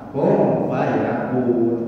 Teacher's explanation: Oh, nun mati menghadapi fa. Fa itu ikhfa.